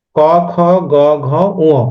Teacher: এই যে কণ্ঠ, এখান থেকে উচ্চারণটা হচ্ছে আমাদের আলজিহ্বা এবং নরম তালু টাচ করে যে ধ্বনিটা উৎপন্ন হয় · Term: কণ্ঠধ্বনি